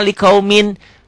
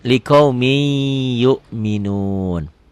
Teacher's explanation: Bacanya jadi liqaumi ditahan. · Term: idgham bigunnah